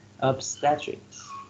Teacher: Obstetrics, 3 syllables, and the first syllable receives the stress.